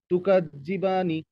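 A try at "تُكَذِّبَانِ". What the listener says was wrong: হ্যাঁ, বাতে টানেন আরো।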